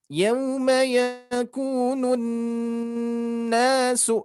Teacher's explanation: Jadi ketika ada nun bertasdid kita harus menahannya.